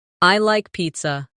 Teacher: Let your voice fall gently at the end. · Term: intonation